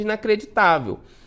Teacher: Porque o tá é, né, a sílaba mais forte, a penúltima, e inacreditável termina em L. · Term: paroxítona